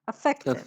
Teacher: Yes, affected. It's a schwa, it's not a.